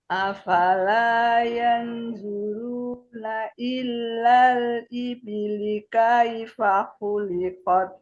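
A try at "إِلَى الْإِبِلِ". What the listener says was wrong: Ilalnya nggak ada tasdid Bu. Ya, sama makhraj bu. Yang buruna. Nah, ya bukan zu tapi bu. Ya, dicekungkan lidahnya.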